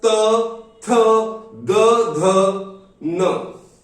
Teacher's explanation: चौथा जो वर्ग है वह त वर्ग, जिसका उच्चारण होता है दंत से। ये हमारे जो दंत है इसके पीछे वाले पोर्शन से इनका उच्चारण होता है।